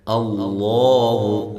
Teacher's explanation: لفظ اللہ کو موٹا کر کے پڑھیں، اس سے پہلے زبر ہے